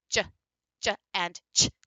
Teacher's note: starting with a stop and then you have just an immediate release of air with friction in it so you have your combination of a stop and a fricative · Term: affricative